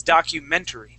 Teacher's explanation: So, the accent is going to go right on the E. So, instead of at the very end saying documentary, it's documentary.